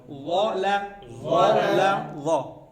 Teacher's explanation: ظا زبان کی نوک اوپر کے دانتوں کی نوک سے ٹکرائیں